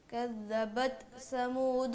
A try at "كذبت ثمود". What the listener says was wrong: کذبت ثمود. سا نہیں ہے, ثمود ہے.